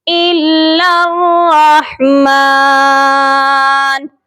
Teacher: لام مشدد کو را مشدد کے ساتھ ملائیں گے اور درمیان میں 3 حروف ہیں، 2 الف ہیں اور 1 لام ہے، یہ تینوں حروف نہیں پڑھے جائیں گے. الا الرحمن، اس ورڈ کو بھی بہت سے لوگ الا الرحمن پڑھ دیتے ہیں، لام کو سختی سے نہیں پڑھتے، تو یہ بھی درست نہیں ہے.